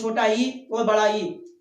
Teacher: तालु से बोले जाने वाले स्वर जो होते हैं हमारे, वो छोटा ई और बड़ा ई, अर्थात तालु से बोले जाने वाले स्वर छोटा ई बड़ा ई होता है, इसलिए इनका नामकरण में आप जाके देखिए कॉलम में, तो आपको देखने मिलेगा इनको हम बोलते हैं तालव्य स्वर।